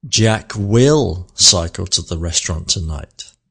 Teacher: I have shifted or moved the emphasis onto will